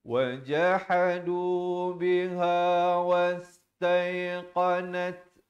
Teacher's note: Nat ada bunyi hamas, bunyi angin.